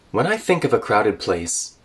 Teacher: so we'll connect the n and the I together.